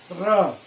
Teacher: र आप बोल के देखो। लुंठित, र बोलते समय आपकी जीभ जो है वो लुढ़क जाती है। र ऐसा लुढ़क जाती है, र हो गया लुंठित। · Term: लुंठित व्यंजन